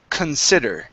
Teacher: this word, the stress falls on sid. So the C-O-N is pronounced kun